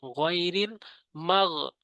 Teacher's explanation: গয়নের উচ্চারণ করতে হবে হলকের শেষ থেকে। মাগ দুবি, দু টানতে হবে।